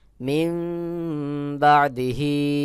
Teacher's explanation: নুন সাকিনের পরে ইকলাবের হরফ বা আসছে এখানে মিম দ্বারা বদল করে পড়তে হবে তখন উচ্চারণ হবে মিম বাদিহি বার জের বির র পেশ রু